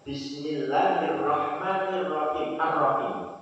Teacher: ketika diwakafkan, maka dia harus panjang 6 harokat.